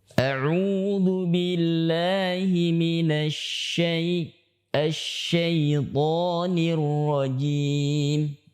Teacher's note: Pemirsa sekalian, ada satu tambahan lagi untuk sifat huruf shin, yaitu sifat tafashi yang artinya menyebarkan. Ya, nafas disebarkan pada saat dia mengucapkan huruf shin ini. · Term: tafasyi